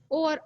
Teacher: कंठ और होठों के सहयोग से जो निकल रही है वह कंठोष्ठ है